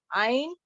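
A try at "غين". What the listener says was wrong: आइन नहीं, गाइन, गाइन। आप, मुझे शायद सुनने में ऐसा लग रहा है आप आइन बोल रही हैं, इस गाइन।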